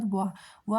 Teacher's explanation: वाह में देखिए आपका जीभ जो है वो दांत पर टच हो रहा है, यानी कि 2 जगह से वाह उच्चारित हो रहा है। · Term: दंतोष्ठ